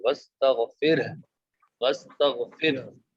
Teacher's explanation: جب اس میں ہم وقف کریں گے تو تو آخر میں ہا کی آواز آنا ضروری ہے، وستغفر، وستغفر، کیونکہ آخر میں ہم نے ہا کو، جو ہا متحرک تھی جس کے اوپر پیش تھا، اس کو ہم نے ساکن کی تو وہ برقرار رہے گی، صرف وستغفر نہیں پڑھنا، وستغفر۔